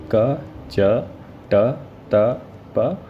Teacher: अघोष अल्प प्राण कौन कौन से हैं, क, च, ट, त, प।